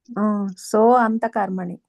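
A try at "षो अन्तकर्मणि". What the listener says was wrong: సో కాదు, షో అంతకర్మణి. అది షో అనేది సోగా మారుతుంది. షో అంతకర్మణి. సో రాసుకుంటే అది తీసేసి షో అంతకర్మణి అని రాయండి.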